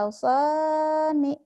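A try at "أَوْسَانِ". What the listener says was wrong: Ya, kurang panjang. Asani gitu ya. Jadi kalau matobi itu dihentikan tetap panjang. Matobi madasi tetap panjang ya. Asani.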